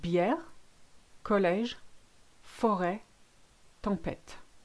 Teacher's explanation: When the accent is the other way around, a grave or circumflex, which we used to call Chinese hat when we were kids, it makes it an air, as in care.